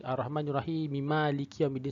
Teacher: Perkataan Ar-Rahim pada asalnya adalah dipanjangkan secara mad asli. 2 harakat. Kan ya tu, Ar-Rahim tu, ya tu sebelum dia ha tu berbaris bawah.